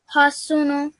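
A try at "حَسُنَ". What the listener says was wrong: Hasuna. There's a fatha on top.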